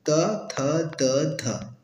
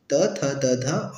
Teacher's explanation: दंत से जो उच्चारित होता है त वर्ण